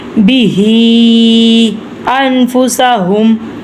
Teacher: ہا کھڑی زیر بھی اور اوپر مد بھی ہے، اس لیے ہم نے ہا کو لمبا پڑھنا ہے